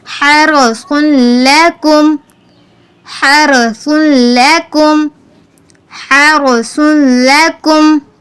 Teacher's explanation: سا پر ہم نے سیٹی کی آواز نہیں نکالنی۔